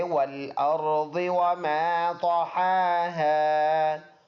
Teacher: ضاد ان حروف میں سے ہے جو پر ادا ہونے والا ہے تو اس کو پر ادا کر کے پڑھیں گے